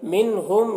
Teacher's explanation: نون ساکن کے بعد حروف حلقے میں سے ہا ہے، نون میں اظہار ہوگا، نون کو ظاہر کر کے جلد پڑھیں گے۔